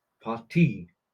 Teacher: the emphasis is more on the second syllable